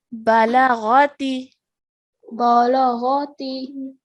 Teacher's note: So we have 4 letters over here that we're joining. So all of these 4 letters need to be pronounced for one count each, and one should not be longer than the other one.